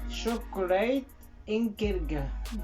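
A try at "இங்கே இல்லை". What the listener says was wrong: Non, chocolate inge ilke. Non, à la fin c'est ilke. Ilke. Inge.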